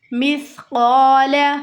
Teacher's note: ये सीन नहीं है, सा है, नरमी से अदा होगा।